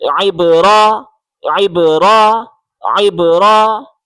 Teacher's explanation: عین کو با کے ساتھ ملائیں، گلے سے زور لگا کے عین پڑھیں. عین با زیر عب، عین با زیر عب، عین با زیر عب.